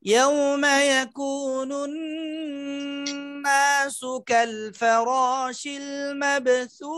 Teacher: মাব বায়ের কলকলাটা নিচের দিকে যাবে